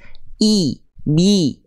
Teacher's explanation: Jadi ketika vokal i keluar, tengah lidahnya angkat ke atas.